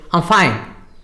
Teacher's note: So the I suddenly disappears.